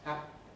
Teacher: There is a real sense in which voiceless plosives consist of a moment's silence. What you hear in the middle of happy is a moment's silence. Happy. That silence is what tells you the consonant is there.